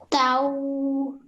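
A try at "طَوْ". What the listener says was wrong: Don't say tau, say tau. Don't make your mouth too round at the end. Tau.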